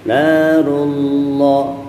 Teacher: Lafdzul jalalah didahului oleh huruf yang berharokatkan fathah atau dhammah, maka dibaca tebal.